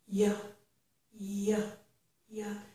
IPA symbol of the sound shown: j